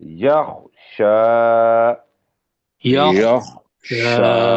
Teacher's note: شین سیٹی والا ہے، اور کھڑی زبر کی وجہ سے شین کو 2 حرکت کے برابر لمبا کرنا ہے۔